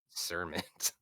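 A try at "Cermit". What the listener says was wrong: No, it's still pronounced the same. It's just with a C instead of a K.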